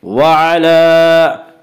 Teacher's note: وعلا لام کے اوپر کھڑا زبر ہے، کھڑا زبر برابر الف مدہ کے، اس لیے کھڑا زبر کو ایک الف کے برابر کھینچ کر پڑھیں گے۔